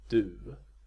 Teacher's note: every time you say a long u you have to end it with this closing W